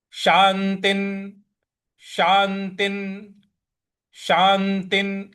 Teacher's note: त के ऊपर जो विसर्ग है उसका न का उच्चारण ले आना है क्योंकि उसके आगे न है।